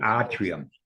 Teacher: The accent is on the ah.